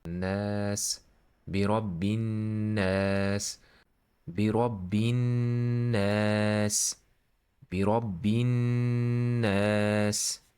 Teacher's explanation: There is noon here with shadda. You should double the noon, and after that you should stretch this fatha.